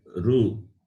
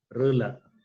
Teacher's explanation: Oo is naturally you will see the rounding of your lips. That is labial. Rula. Okay.